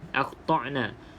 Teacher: Jadi pastikan hamzah ini keluar pada halqum bahagian yang bawah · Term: huruf hamzah yang mati